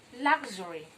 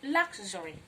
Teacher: In this word, letter X makes the sound k and sh.